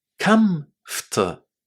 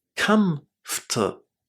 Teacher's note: The letters OR inside this word are silent. We don't say them. So we say comfortable.